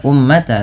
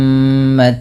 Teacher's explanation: Kemudian pada lafal ummatan wasatan litakunu, pada lafal mim berharakat tasydid, ini ditahan dulu bunyi suara nya sepanjang 2 harakat karena terdapat hukum tajwid berupa bacaan gunnah. Maka jangan hanya sekadar ummata, tapi ditahan dulu ummatawa.